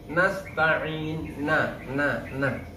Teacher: sebenernya ada tetapi dengung yang sangat singkat